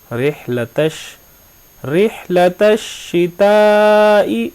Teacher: یہاں پر تا جو ہے شین کے ساتھ جوائنٹ ہو رہا ہے، مل رہا ہے. الف اور لام جو درمیان والا ہے یہ دونوں ساکن ہیں، ان کو آپ نے نہیں پڑھنا.